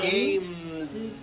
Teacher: the s should also be voiced